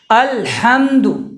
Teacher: جو ہا ہے وہ بیچ حلق سے ادا ہوتا ہے